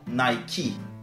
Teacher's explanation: le E à la fin du mot est prononcé I dans Nike. Oui, Nike, ça vient d'un mot d'origine grecque à la base, puisque ça fait référence à la déesse de la victoire qui s'appelait Nike.